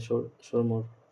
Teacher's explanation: واو معدولہ جسے کھینچ کر نہیں پڑھیں گے